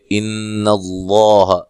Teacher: ان اللہ نون مشدد پہ غنہ ضروری ہے